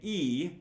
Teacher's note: when you say E, your tongue is high and forward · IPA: /i/